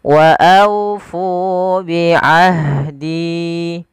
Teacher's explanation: aunya lembutkan sambil dimonyongkan sedikit bibir kita ke depan untuk menyempurnakan daripada huruf wawnya. Wa aufu bi ahdi. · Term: bacaan lin